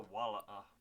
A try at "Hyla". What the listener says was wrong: Hyla. It sounded like you're trying to say koala.